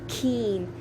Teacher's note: When you say keen, there is an aspiration after the first k. Why? Because these sounds, when they are followed by a vowel, it is aspirated.